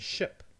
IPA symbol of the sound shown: ʃ